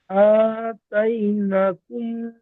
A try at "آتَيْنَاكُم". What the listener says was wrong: নাকুম নয়, নাকুম, নুনের উপরে খাড়া যাবার আলিফ মাদ্দার সমান এক আলিফ টান দিতে হবে।